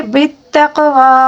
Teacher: قاف کو قلقلے کے ساتھ بھی پڑھنا ہوگا اور پر بھی پڑھنا ہوگا